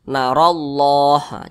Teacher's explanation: Allah ini ada huruf ro dan ro ini berbaris ke atas maka Allahnya ini dibaca tebal